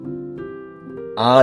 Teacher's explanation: এক্ষেত্রে জিহ্বা সবচেয়ে নিচু স্তরে থাকছে বা জিহ্বা সবচেয়ে নিচে চলে যাচ্ছে এবং এজন্য একে নিম্ন স্বরধ্বনি বলা হচ্ছে এবং এই নিম্ন স্বরধ্বনি হচ্ছে আ আ আ যখন বলছি তখন আমার জিহ্বা দেখা যাচ্ছে আ হচ্ছে জিহ্বা তখন অনেকটা নিচে চলে যাচ্ছে এবং সবচেয়ে নিচে চলে যাচ্ছে আ।